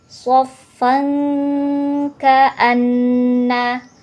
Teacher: ada fathatain pada fan bertemu dengan huruf Kaf jadi bacanya dengung disertai samar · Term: ikhfa Hakiki